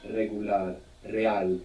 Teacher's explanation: An initial R, like in regular, in most Spanish dialects, it's a rolling R. You get this flick of the tongue